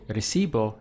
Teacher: I stress the syllable before last